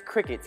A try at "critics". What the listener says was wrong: You said crickets again. It's critics.